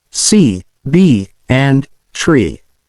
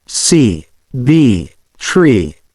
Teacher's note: For the long E, the tongue should be positioned high in the mouth, and the sound should be stretched.